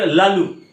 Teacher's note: জিহ্বার দুপাশ দিয়ে শ্বাসবায়ু বেরিয়ে যাচ্ছে, জিহ্বার দুপাশ দিয়ে বায়ু বেরিয়ে যাচ্ছে, তার জন্য এটাকে পার্শ্বিক ধ্বনি বলা হচ্ছে।